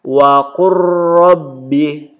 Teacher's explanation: Contoh membacanya ini waqur rabbi, tidak dibaca lagi waqul rabbi, lamnya langsung ke ro, waqur rabbi. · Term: idgham